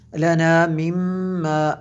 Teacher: دیکھیں میم شدد ہے، یہاں پہ غنہ کیا